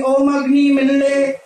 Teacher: ल डा के बीच का बोलते हैं ल